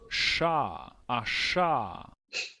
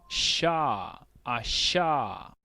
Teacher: And retroflex, what you need to do in order to pronounce the retroflex consonant is to actually, how to say, you have to bend the tongue back and actually touch the top of the mouth with the underside of the tongue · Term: retroflex S